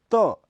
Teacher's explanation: में ऐसा नहीं होता तोत यह अल्प प्राण अघोष ध्वनि है इसका उच्चारण स्थल दांत है जीभ का अगला भाग जब ऊपर के दांतों को स्पर्श करता है